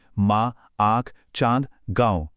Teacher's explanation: मां, आंख, चांद, गांव इन सब में चंद्रबिंदु लगा है। जब हम इन्हें बोलते हैं तो हवा, मुंह और नाक दोनों से एक साथ निकलती है। यही वो गूंज है जो अनुनासिक की असली पहचान है।